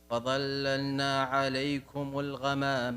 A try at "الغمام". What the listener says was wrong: الغاء الغاء مفخم، ما مرقق، الغاء الغماء. الغماء.